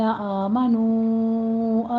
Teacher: الذین میں دال کو نرمی سے پڑھتے ہوئے یا مدہ ادا کیجیے۔ آمنو میں آ میں فتح قائمہ ہے، 2 کاؤنٹ کرنے ہیں، نو میں مد منفصل جائز ہے، اس کو 4 کاؤنٹ کرنا ہے